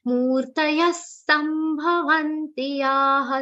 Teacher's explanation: Ya is followed by visargas, whose pronunciation will be like sa.